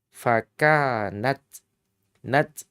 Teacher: tak maftuha ini memiliki sifat hams